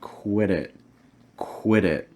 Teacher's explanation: you're also going to be linking the quit in the it with a fast d or a flap t whatever you prefer to call it so again it sounds like · So watch out for these short I sounds. You're also going to be linking the quit and the it with a fast D or a flap T